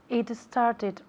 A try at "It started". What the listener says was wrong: Started, cuidado con la E delante de la S. Eso es español, ¿por qué? Vives en España. El país tiene una E delante de la S, entonces todas las S tienen que estar así, ¿no?